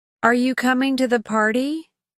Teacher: The pitch rises at the end of the sentence, indicating that it's a question. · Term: Rising intonation